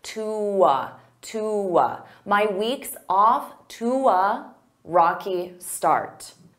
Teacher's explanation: instead of saying to a, I can combine those together with a w, to. So I use that w to glide.